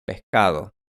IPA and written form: pehkað̞o (pescado)